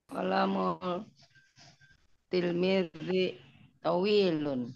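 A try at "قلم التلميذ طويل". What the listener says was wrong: Kenapa kolamul ya? Itu alif lamnya alif lam jenis apa? Kok kolamul?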